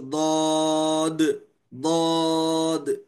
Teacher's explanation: حرف استطالت ایک یعنی ضاد ہے، اس کی آواز مخرج سے بتدریج نکلتی ہے، بتدریج جو ہے مخرج سے آواز نکلتی ہے، ضاد، ضاد، اس طرح.